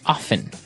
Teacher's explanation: They kind of leave out the strong T sound. Well other people say often.